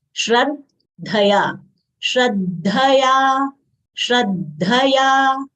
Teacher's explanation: Shra is a conjunct letter, half palatal sh, full ra, followed by conjunct letter half the full dha. Dha is a mahapran letter. We should exhale while saying dha. It should not come out as the.